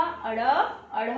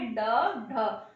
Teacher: उच्चारण के समय जीभ जो है, हमारी जिह्वा जो है, पीछे की ओर जाकर झटके से आगे गिर जाती है, यानी उच्चारण जो स्थल है उसको टच करती है झटके से और फिर नीचे आ जाती है, इसलिए इन्हें उपक्षिप्त व्यंजन कहते हैं, क्योंकि इसका मतलब क्या है?